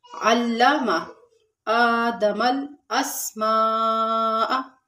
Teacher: آدم حمزہ پہ کھڑا زبر ہے، تھوڑا سا کھینچیں گے